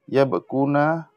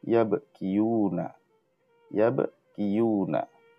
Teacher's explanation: The third radical ya has been lost.